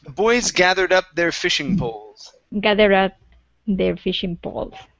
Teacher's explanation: so connect that d to the word up